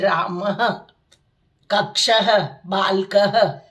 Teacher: विसर्ग का उच्चारण ह के रूप में संस्कृत में किया जाता है